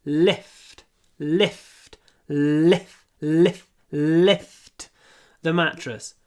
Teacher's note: Л, очень короткий перед глухим ф.